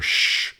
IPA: ʃ